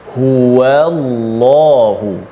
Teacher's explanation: yang lam tu kena baca tebal, waw tu tetap nipis